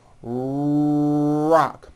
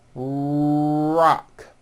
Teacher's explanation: notice how my lips are coming forward and my tongue moves back in my mouth, and I push out the R sound